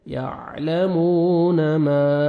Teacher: الف مد ہے, میم کو آپ نے کھینچنا ہے